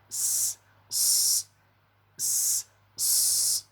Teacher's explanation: S, s, s, dengan cara menebalkan bunyi desisnya, ya. Bunyi desisnya harus terdengar tebal, tidak sama dengan bunyi desis pada huruf sin.